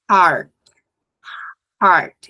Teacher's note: o r leve é o r fraco que vem lá do fundo da garganta